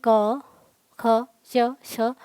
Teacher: और इसे उच्चारित करेंगे, आप देखेंगे क, ख, च, छ आराम आराम से हो रहा है और इसमें कंपन उत्पन्न नहीं हो रहा है प्राणवायु में। तो ये आपके अघोष हैं और जिनमें कंपन उत्पन्न हो रहा है, यानी कि प्रत्येक वर्ग का तीसरा, चौथा, पांचवा वर्ड यह जो है आपका सघोष है।